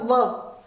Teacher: यानी केवल व ऐसा है जिसको बोलने में दांत और ओष्ठ दोनों लगते हैं, इसको दंतोष्ठ्य।